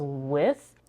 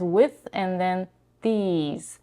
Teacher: What she does is she's devoicing the TH here and she says with.